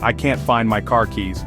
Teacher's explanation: differences imagine an American saying I can't find my car keys listen to the flat a in can't and the hard R in car